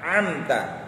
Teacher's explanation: Amta ya, ain tengah tenggorokan